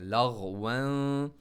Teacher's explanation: لام کو غائن کے ساتھ ملا, لغون. غائن کو موٹا پڑھیں گے, باؤنس نہیں ہوگا بلکہ غائن موٹا پڑھیں گے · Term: ہیوی لیٹر